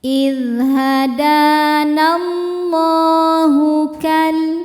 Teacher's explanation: Di lam jalalah masih ada hukum tajwid namanya mad thobi'i muqaddar. Karena ada lam dengan harakat fathah panjang. Cara bacanya panjang dua harakat.